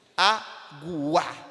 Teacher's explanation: A força está no A. O U é a semivogal. Ela é reproduzida de forma mais fraca. Então, vai da mais fraca para a mais forte. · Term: crescente